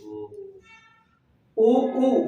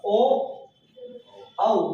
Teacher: ऐसे स्वर जिनके उच्चारण में होठ व्रत के आकार जैसा स्वरूप लेता है। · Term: व्रतमुखी